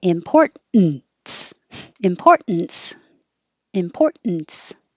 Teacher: Most native speakers will drop that T and make it a syllabic N.